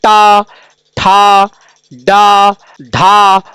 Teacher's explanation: यह ध्वनियां मूर्धन्य है यानी इनका उच्चारण मूर्धा से होता है